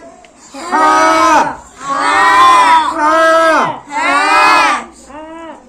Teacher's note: তারপরে হা, কণ্ঠনালীর মাঝখান থেকে, কণ্ঠনালীর মাঝখান থেকে উচ্চারণ হবে